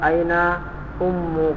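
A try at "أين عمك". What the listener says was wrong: Ammu, kalau ummu pakai hamzah artinya ibu, ammu paman.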